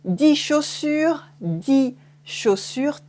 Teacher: 10, and then according to what's after it, it will change. So with une consonne afterwards, we remove the X or S sound.